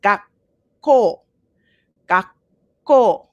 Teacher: so there's a little like click almost in there as opposed to gaku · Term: double consonant